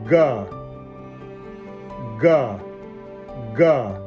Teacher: it becomes voiced ga, when it comes between two vowels or after a nasal sound, with vibration on the vocal cords